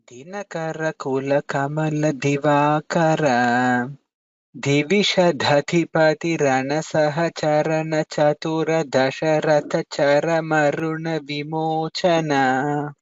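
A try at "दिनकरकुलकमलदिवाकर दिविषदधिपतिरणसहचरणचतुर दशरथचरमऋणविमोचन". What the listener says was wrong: So here Divisha Dajipati, the Alpa Prana Mahaprana difference should be clearer mahodaya.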